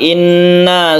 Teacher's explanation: tasydid Nun ini dibaca dengung